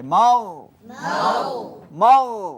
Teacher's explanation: মাগ বললে মারাত্মক ভুল হবে কলকলা হয়ে যাবে